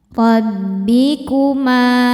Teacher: Ro dibaca secara tafkhim karena berharokat fathah, maka ro-nya tebal. Rabbikuma. Ma hukumnya mad tobi'i dhohiri karena ada alif didahului harokat fathah.